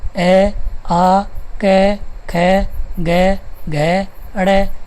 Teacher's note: अ आ क ख ग घ ण तथा विसर्ग है। इनका उच्चारण स्थान है कंठ और ध्वनि का नाम हो जाएगा कंठ्य।